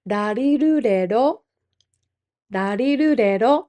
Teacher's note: Darirurero takes place not in the back of our throat like English R's, but more in the middle. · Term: Japanese R